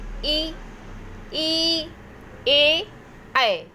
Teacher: हमारी जीभ जो है फोल्ड होके, यानी कि मोड़ जाके कहाँ टच हो रही, तालु में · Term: तालव्य स्वर